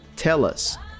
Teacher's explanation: This is another nice instance of connected speech. Basically, the L sound from tell links to the following vowel sound in us.